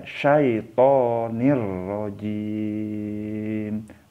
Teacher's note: Jadi jangan dibaca dengung ya, harus tanpa dengung walaupun dimasukkan. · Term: idgham bila gunnah